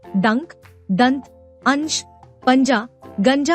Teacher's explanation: अनुस्वार के उदाहरण में नाक से सांस अधिक निकलती है और मुख से कम